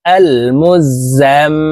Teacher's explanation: হইলে সর্ব অবস্থায় নাকের বাঁশি থেকে গুন্নাহ করিয়া পড়িতে হয় তো এই জাত আসওয়ালা মিমের সাথে তিন সেকেন্ড পরিমাণ গুন্না করে ধরে রাখবো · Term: ওয়াজিব গুন্নাহ